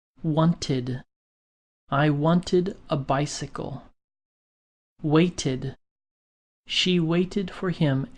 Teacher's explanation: some past tense regular verbs end with the ID sound